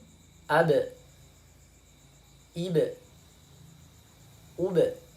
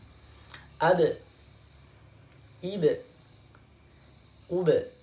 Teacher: ketika sukun huruf ba itu dipantulkan